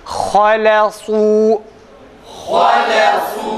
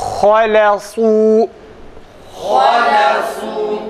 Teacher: Dudak lamda geride, ha'da ise doğal halinde çok hafif bir şekilde öne doğru. Yalnız lamda geride.